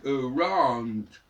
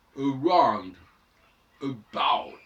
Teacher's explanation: c'est le O prolongé par une sorte de W